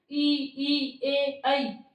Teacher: जब हम बोलते हैं ना ई, ए, ऐ, तो जीवा है वो दांतों पे टच कर रही है, तो ये हो गए अग्र स्वर, ई, दीर्घ ई, ए और ऐ।